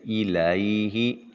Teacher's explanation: إِلَيْهِ لام کے اوپر زبر ہے، یا ساکن ہے، یا ساکن ما قبل مفتوح اور یا لین ہوا، نرمی سے ادا کریں گے۔